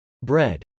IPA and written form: brˈɛd (bread)